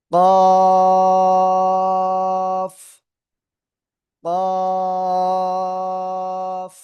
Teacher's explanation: জিহ্বার গোড়া তার বরাবর উপরে তালুর সাথে লাগাবো, লাগিয়ে আমরা 4 আলিফ টানিয়ে উচ্চারণ করব